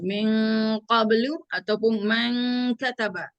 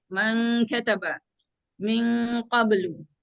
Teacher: bila nak jumpa dia ikhfa yang paling tebal ni qaf dengan kaf lah